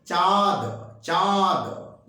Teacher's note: मुख और नाक दोनों का प्रयोग होता है। जैसे आप एक उदाहरण ले सकते हैं, जैसे चांद, चांद, 5, एक बार हमारे साथ साथ बोल के देखिए, चांद, चांद, जैसे मुंह और नाक दोनों एक साथ काम कर रहा है। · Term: अनुनासिक